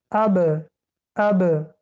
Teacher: وقتی که حرف ب رو تلفظ کردیم لب ها رو تیز میکشیم. اب، اب. ببینید اب.